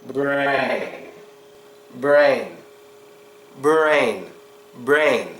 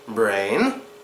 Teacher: strong R sound but no protruding of the lips